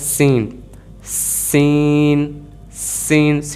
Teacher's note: सीन में सीटी आनी चाहिए और ये सा के ज़ुमरे में नहीं जाना चाहिए। सीन, इसको सीन नहीं पढ़ना, इसे सीन पढ़ना है सीटी के साथ, सीन।